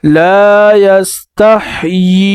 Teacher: یا کے نیچے زیر پڑھیں گے اور اسے کھینچیں گے، 3 الف کے مقدار کھینچ کر پڑھیں گے